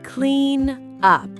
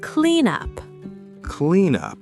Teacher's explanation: A native moves the consonant to the next word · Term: linking